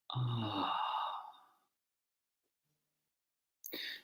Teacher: with ah, there can be a gentle onset and a gentle release